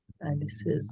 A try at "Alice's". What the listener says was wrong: Apostrophe S. Alice apostrophe S is pronounced? Not Alice. Alice's.